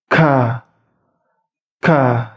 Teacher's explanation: Huruf K itu lidah agak belakang tapi tidak ke belakang sekali. Ingat, lidah agak ke belakang itu bertemu dengan langit-langit atas.